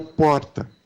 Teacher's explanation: lá em São Paulo a gente tem o r tep que é o porta